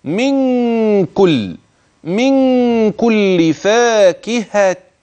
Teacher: زوجان زوجان فيهما المد الطبيعي لاحظه جيدا فيهما من كل فاكهه هنا مكان الغنه بين كلمه من عند وصلها بكلمه كل